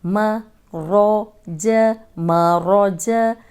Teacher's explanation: अब मीम बारीक, जीम बारीक और रॉ को मोटा रखना है।